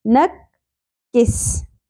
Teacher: نون کی زبر کاف کے ساتھ پہلے ملے گی، تشدید کے نیچے وہی حرف 2 دفعہ ہوتا ہے